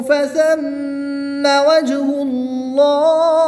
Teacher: میم مشدد میں غنہ کر کے پڑھیں گے، جیم حرف قلقلہ میں سے ہے اور جب حرف قلقلہ ساکن ہو تو ان میں قلقلہ خوب ظاہر ہوگا۔ اس میں جلالت اللہ عز و جل کے لام سے پہلے حرف پر پیش ہے تو اس لام کو پر یعنی موٹا پڑھیں گے۔ وقف کی حالت میں زیر کو ساکن کر دیں گے۔